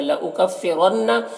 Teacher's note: را کو پر پڑھیں گے، نون مشدد غنہ ہوگا